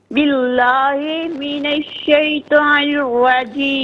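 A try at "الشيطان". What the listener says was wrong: شیطان، تا کو پر پڑھنا ہے. شیطان الرجیم.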